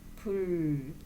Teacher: 불은 불 하면서 두 입술 사이에서 나는 소리예요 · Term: 두 입술 소리